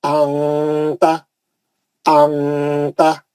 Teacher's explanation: निकलने नहीं देना आवाज को क्या करना नाक में लेके चले आवाज को जो है नाक में ला लेना आवाज को नाक में लाके गुंडा करना · मुंह बड़ा खोल के आवाज को नाक में ले आना आवाज को नाक में ले आके घुटने से पढ़ देना कैसा अता नाक से पढ़ना अता अता